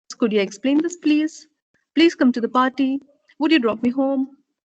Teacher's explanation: So where you have requests, polite requests, you would be using the rising tone.